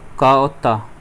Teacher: क और त ये अघोष भी है और अल्प प्राण भी है